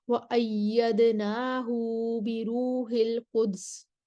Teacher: ایدناہو پر مکی کا صلہ ہے، ہائی ضمیر پر مکی کا صلہ ہوتا ہے